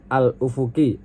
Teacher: dihukumi alif lam qamariyah karena lamnya dibaca jelas karena bertemu dengan huruf qamariyah yaitu alif